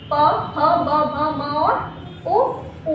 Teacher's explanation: औष्ठ जिनका उच्चारण स्थान होठों के दोनों ऊपरी और निचला हिस्सा मिलकर जिन स्वरों का उच्चारण करता है वो औष्ठ कहलाते हैं।